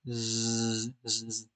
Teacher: Zaay has vocal cords vibrating, which is why it sounds different to Sin.